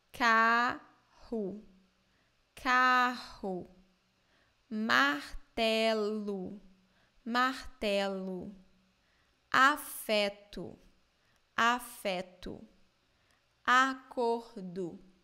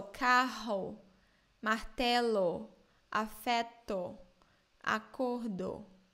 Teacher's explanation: in Brazil, the letter O in the end of words normally sounds like U,